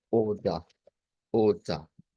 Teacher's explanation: Entonces ya tenemos una idea que eso va a sonar como una A media, una A centralizada